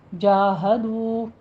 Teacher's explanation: جاہدو واو مدہ ادا کیجیے، دونوں ہونٹوں کو گول کرتے ہوئے 2 کاؤنٹ کرنے ہیں